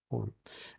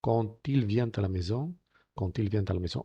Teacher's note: en el caso de la D, si hace liaison, pues se ensordece y se transforma en T.